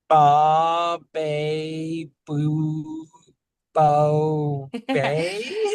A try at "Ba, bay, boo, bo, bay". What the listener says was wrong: That's okay. You're good. You're good. You got the gist of it.